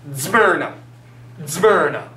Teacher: But it has the z, z, z. So it's almost like it's both a D and a Z at the same time. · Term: DZ sound